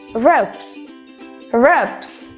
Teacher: Kata rope diakhiri dengan suara P. Yang mana ketika kita tambahkan S, S-nya harus dibaca S. Menjadi ropes.